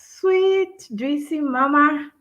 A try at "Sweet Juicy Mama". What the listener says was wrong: Yeah, well, I don't pause. You said sweet juicy mama.